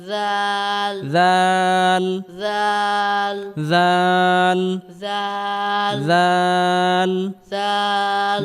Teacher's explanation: জিহবার আগা সামনের উপরের দুই দাদের আগা থেকে উচ্চারণ করতে হবে